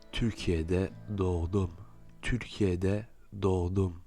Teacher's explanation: selon l'accent, vous pouvez entendre un léger gu à la place de ce g avec l'accent circonflexe